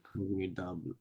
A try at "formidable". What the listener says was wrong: দ সব সময় দ হবে দ কখনোই ড হবে না ফর্মিডাবল দয়াকার বলো ডাবল